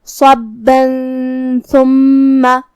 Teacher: تنوین چھپاتے ہوئے لیکن غنہ کے ساتھ یہ حکم کو ادا کریں گے